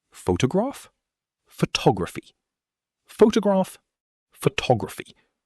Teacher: This is a beautiful example of how stress moves in English when you change the word form. Photograph, stress on the first syllable. Photography, stress jumps to the second.